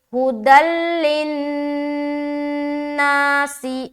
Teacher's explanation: لام میں رکاوٹ بالکل بھی نہیں ہونی چاہیے، صرف نون میں رکیں گے، کیونکہ یہاں پر ہم نون مشدد کا غنہ کر رہے. ٹھیک ہے، اور سین کو بھی ہم جلد پڑھیں گے زیر کی حرکت کے ساتھ.